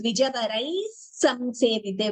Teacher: if you choose to combine, it becomes Dvijavaraihi samsevite with an extra s. So there is s and then samsevite. So both have to be heard.